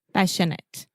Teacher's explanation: the majority of adjectives in English that end in ate, we will simply produce the it sound